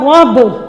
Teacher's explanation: دیکھیں اس کو را کو ہم با کے ساتھ ملائیں گے، با مشدد ہے، پہلے با کو را کے ساتھ پڑھیں گے، پھر با کی اپنی حرکت کے ساتھ، را با زبر رب۔